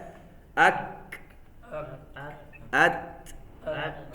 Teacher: کاف کو کاف ہی رکھیں، اس کے بعد جو ہلکی سی آواز ہے وہ ہمس کی آواز ہے